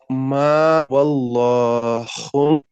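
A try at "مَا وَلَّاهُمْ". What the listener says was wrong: واللہ مت پڑھیے، ولا، ولاہم، ما ولاہم.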